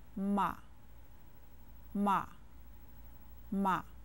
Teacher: Ma is said with a neutral tone.